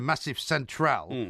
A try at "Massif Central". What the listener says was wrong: No, you said the Massive Central. Massif. The Massif.